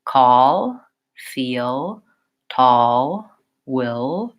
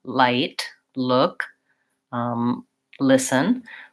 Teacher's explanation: a little lift at the end call feel tall will and the back of my tongue stays more down whereas in the front L the back of my tongue rises up a little bit more you're welcome Alex it's a it's a challenging sound you'll hear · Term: dark L